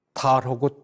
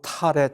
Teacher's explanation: 발음을 어떻게 하느냐, 내가 예를 많이 들지만 달하고 탈의 차이는 달은 보통으로 발음을 하고 탈할 때는 우리가 호기를 세게 합니다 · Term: 조음 방식